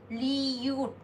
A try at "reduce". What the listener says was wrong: Oh, well, this is gonna be hard, you did. Because the R is an L, so yeah, it's not gonna be reduce.